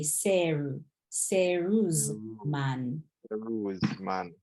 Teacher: There's no L in Japanese, so the L is going to be replaced with an R.